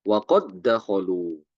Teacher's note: Apabila ada huruf dal qad wa qad setelahnya datang huruf dal seperti kata wa qad dakhalu ya di sini contohnya wa qad dakhalu maka dalnya itu diidghamkan langsung ke dalam huruf dal yang kedua